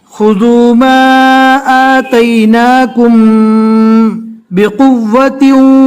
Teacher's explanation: میم ساکن کے بعد اخفاء شفوی کا جو ایک حروف ہے با، وہ با آیا ہے، لہٰذا یہاں پر اخفاء شفوی کریں گے. اخفاء شفوی کہتے ہیں کہ میم کو گنہ کے ساتھ پڑھیں گے